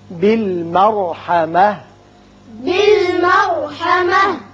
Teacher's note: بالمرحمة را پر ہوگا، تا ہتائیہ ساکن ہو کر ہا بن جائے گی